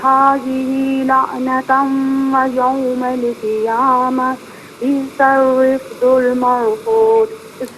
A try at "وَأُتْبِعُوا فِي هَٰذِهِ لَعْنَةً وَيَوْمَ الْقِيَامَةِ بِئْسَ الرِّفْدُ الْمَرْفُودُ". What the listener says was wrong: یہ وَأُتْبِعُوا نہیں، وَأُتْبِعُوا تا کو بالکل ساکن پڑھیں، اور بِئْسَ الرِّفْدُ یہ را ہے، را کے نیچے زیر ہے، اس را کو باریک کر کے پڑھنا ہے.